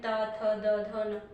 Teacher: इसके बाद जो ता वर्ग है इसका उच्चारण के स्थान पर अगर हम देखें तो ये दंत है, यानी दांतों का, इसमें हमारा जो जीभ है वो दांतों को टच करते हुए बोलती है, त, थ, द, ध, तो ऊपर वाले दांतों को जीभ टच करते हुए बोल पाती है